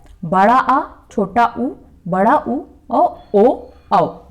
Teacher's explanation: जिन स्वरों के उच्चारण में जीभ के पीछे का हिस्सा उठता है, पश्च मीन्स पीछे, उसे कहते हैं पश्च स्वर।